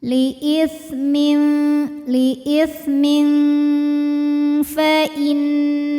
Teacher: Karena ada tanwin kasrah yang menghadapi huruf fa, maka tanwinnya ini dibunyikan samar-samar, siap-siap menuju makhraj huruf fa disertai bunyi dengungan. Liisitmin samar dan dengungannya sama. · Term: ikhfa hakiki